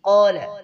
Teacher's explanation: جو سب سے لو درجے کا قلقلہ ہوتا ہے اس کو قال پر ہوتا ہے، یعنی متحرک پر قلقلہ ہوتا ہے